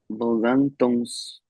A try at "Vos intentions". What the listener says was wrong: Yes, and with an S sound. Good job catching that right here.